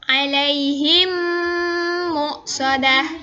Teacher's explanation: mim sukun dimasukkan atau digabungkan dengan mim yang ada di depannya, kemudian berdengung. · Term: idgham mimi